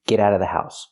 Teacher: you don't have to pronounce the V sound in of because it's before a consonant